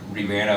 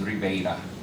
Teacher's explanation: stressed E, which becomes a diphthong, similar to Portuguese. So the actual word Rivera becomes Ribeira.